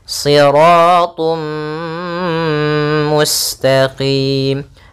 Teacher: Maka cara membacanya yaitu kita masukkan tanwinnya ke huruf mim dan ditahan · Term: idgham bi gunnah